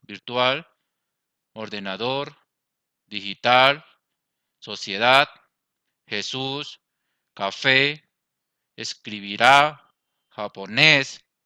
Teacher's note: tiene el acento en la última sílaba, o la sílaba tónica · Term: Agudas